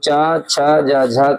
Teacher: च, छ, ज, झ का जो उच्चारण स्थान होता है वो होता है तालव्य